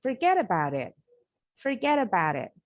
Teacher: Ini disebut dengan flap T sound in American English pronunciation.